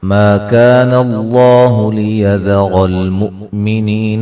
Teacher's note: ما الف مدہ ہے، کا الف مدہ ہے، اللہ لفظ اللہ کو موٹا ادا کریں گے، اس سے پہلے حرف پر زبر ہے۔ لیذر را کو موٹا ادا کریں گے، حمزہ کو جھٹکے سے ادا کریں گے۔